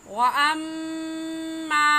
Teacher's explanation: व अम्मा में मीम मुशद्दद है और मीम मुशद्दद पर हमेशा गुन्ना करके पढ़ते हैं, इसलिए यहाँ पर गुन्ना करेंगे।